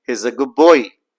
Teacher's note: So the D sound changes into P. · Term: assimilation